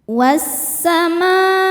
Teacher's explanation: Pada kata as-samaa, maka huruf mimnya ini panjang, tidak boleh 2 ya, melainkan 4 atau 5 harokat